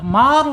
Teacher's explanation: Ar ar karena dia mempunyai sifat yang lain inhirab ya harus atau wajib dicondongkan lidahnya ke belakang sehingga menjadi ar menjadi tebal. Mar gitu ya tebal. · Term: takrir